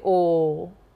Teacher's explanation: straight O. So we do the O as a monophthong.